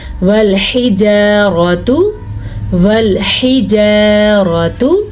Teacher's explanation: والحجارات، والحجارات، ہا کا دھیان رکھنا ہے آپ نے. آگے الف مدہ ہے، اس کا دھیان بھی رکھنا ہے اور را کو پر پڑھنا ہے